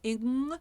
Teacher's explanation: the middle of the tongue hitting right at the velar conjunction between the hard palate and the soft palate, where the bone stops and things become soft. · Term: velar consonants